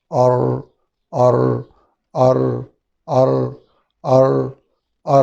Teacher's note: آواز مشابہت ایسے لگتی ہے کہ را کو 2 بار ادا کیا جا رہا ہے، یعنی 2 بار ادا کرنا نہیں لیکن ہلکی سی اس میں یہ مشابہت ہوتی ہے۔